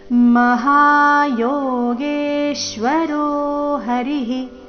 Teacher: ಯೋಗೇಶ್ವರೋ ದೀರ್ಘ ಹೇಳಿ ನಂತರ ಅದರ ಮೇಲೆ ಆಘಾತ